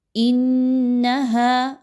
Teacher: ہا الف زبر ہا، 2 حرکت کے برابر الف مدہ کی ادائیگی